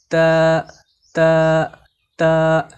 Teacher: তা হরফকে জিহ্বার আগা উপরের দন্ত তালুর সঙ্গে লাগিয়ে চিকন করে পড়তে হয়